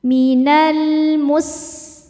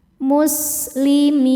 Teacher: Sinnya berdesis karena sin salah satu sifatnya sofir, ada desisan.